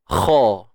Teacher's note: Kha pada atas kha. Tebal. Isti'la juga, terangkatnya pangkal lidah kita.